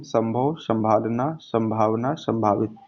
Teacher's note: यहाँ पर मुंह के साथ नाक का भी प्रयोग करना पड़ रहा है